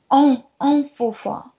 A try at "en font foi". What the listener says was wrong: Oui, c'est en font foi. Les en ou les on, il faut bien les dire.